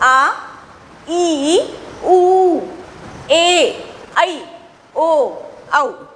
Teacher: दीर्घ यानी बड़ा, दीर्घ यानी क्या, बड़ा, यानी जिसके उच्चारण में ह्रस्व स्वर से भी 2 गुना समय लगता है, उसको हम दीर्घ स्वर कहते हैं।